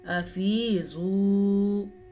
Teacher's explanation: زوات کو پر پڑھیں گے، واو مدہ کے ساتھ پڑھیں گے